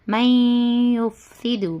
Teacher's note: میم کو ڈائریکٹ یا میں ملانا، نون کی آواز سائلنٹ ہو جاتی، نون سائلنٹ ہو جاتا اور میم کو ڈائریکٹ ہم یا میں ملائیں گے، اور کیا ہے؟ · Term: ادغام مع الغنہ